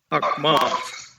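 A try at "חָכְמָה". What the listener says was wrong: Okay, this is not a, but o. Chochma. Chochma. So if we see chochma, we have this syllable is open or closed? Right, it's a closed syllable. So we're going to say that this is historically closed. It's not going to open, it's not going to break. That's a historically closed syllable.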